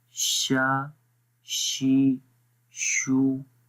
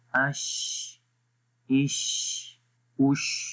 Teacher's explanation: ज़ुबान के दरमियान वाला हिस्सा और तालु के दरमियान वाले हिस्से में थोड़ा सा गैप रहता है, ज़्यादा नहीं, जिससे हवा बाहर खारिज होती है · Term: शीन